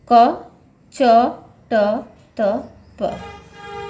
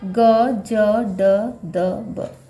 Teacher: जब आप उच्चारण करते हो तो उच्चारण के बाद अंत में ह की ध्वनि नहीं आती है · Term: अल्प प्राण